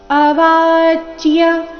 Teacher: ಸಂಯುಕ್ತ ಅಕ್ಷರ ಏನಿದೆ ಅರ್ಧಚ ಮತ್ತೆ ಪೂರ್ತಿ ಯ ಯ ಸ್ಪಷ್ಟವಾಗಿ ಕೇಳಿಸಬೇಕು